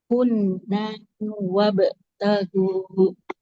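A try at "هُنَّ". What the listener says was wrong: Hunna, nunnya nggak boleh panjang.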